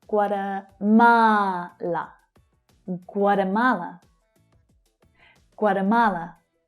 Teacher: So we've got 4 syllables here and the third one is stressed.